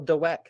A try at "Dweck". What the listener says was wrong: Well, I think it's Dweck, but You're overpronouncing the W. It's not Dweck.